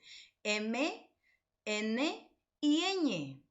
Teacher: el aire es expulsado a la vez por la boca y por la nariz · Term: nasales